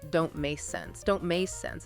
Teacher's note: And the K sound in make is similar. Your tongue goes up to the back of your mouth into position for the K sound, but the air isn't fully released before you move straight into the N sound of sense. So make almost sounds like may, followed immediately by sense. · the T at the end of don't is typically not fully pronounced as a crisp T sound with that little puff of air you might expect. You might just hear the tongue go to the T position and stop the air, but not release it before moving to the M of make.